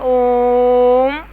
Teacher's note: इन स्वरों के उच्चारण में 3 मात्राओं का समय लगता है, अर्थात इनके उच्चारण में सर्वाधिक समय लगता है। जैसे कि देखिए ओम, तो इसमें ज़्यादा समय लग रहा है, तो ये हो जाएगा प्लुत स्वर।